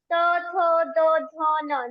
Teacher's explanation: जीभ के अग्रभाग के दंत से स्पर्श होता है, दांत से स्पर्श होता है